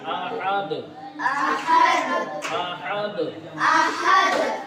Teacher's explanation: اور یہاں چھوٹی ہاں کی آواز نہیں آنی چاہیے